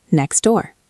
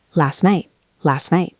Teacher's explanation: So in natural speech, we delete the T. We just say next door.